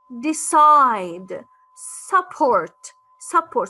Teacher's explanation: So the first syllable is unstressed, but the second syllable is more stressed.